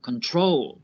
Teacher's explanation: With control, the stress is on the last syllable